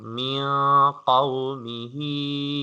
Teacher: if there is qaf, then we have to pronounce with gunna. We have to do ikhfa sound.